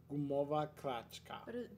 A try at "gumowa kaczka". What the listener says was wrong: Yeah, but you're saying R in the kaczka.